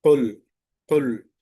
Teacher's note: కాఫ్ లావుగా చదివే అక్షరం కాబట్టి సిఫాత్లో ఇది లావుగా చదవాలి · సిఫాత్లో ఇది లావుగా చదవాలి ఇది హుర్ఫ్ ఎక్కడి నుంచి వస్తుంది ఆర్టికులేషన్ పాయింట్ మన నాలుక చివరి భాగంలో కొండ నాలుక ఎక్కడైతే ఉందో అక్కడి నుంచి ఇది బయటికి రావాలి